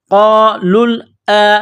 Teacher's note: حمزہ کڑا زبر آ، ایک الف کی لمٹ میں کھینچنا ہے